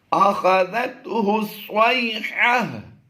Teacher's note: گول تا کو وقف میں ہا سے بدل دیں گے، ہا ساکن سے بدل دیں گے